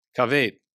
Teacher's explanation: As we said, normally we would expect a patach, which is a short A-class A-type vowel. Instead, what we get is tzere, which is a long I-class E-type vowel